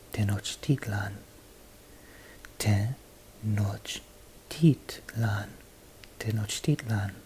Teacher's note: the second to last syllable goes up in tone and then falls back down